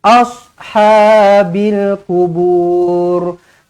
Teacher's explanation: Jangan baca nipis kat short ni ya. Jangan baca asha. Dah jadi huruf sin. Huruf short dia tebal.